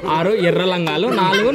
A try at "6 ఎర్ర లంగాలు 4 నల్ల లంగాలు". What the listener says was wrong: ఏంది రంగాలు కాదు లంగాలు కొడుకు